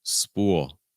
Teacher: so it's the ooh sound with a dark L